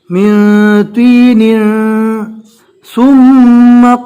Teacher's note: یعنی تنوین کو ناک میں چھپا کر پڑھیں گے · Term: اکفا